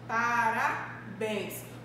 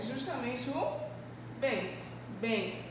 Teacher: A gente percebe justamente que possui um som aberto em relação à vogal E. Então, a gente vai perceber que a minha sílaba tônica está justamente no finalzinho da minha palavra